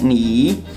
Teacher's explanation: it's pronounced with the third tone